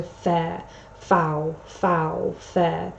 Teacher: here we get the repetitive use of fricatives. That's the consonant sound F